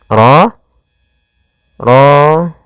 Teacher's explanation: Dan ro di sini ro tafkhim. Rnya harus dibaca dengan tebal.